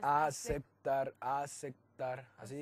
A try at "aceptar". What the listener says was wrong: Tus dos labios tenés que pegar. No, es con la C, es con la P.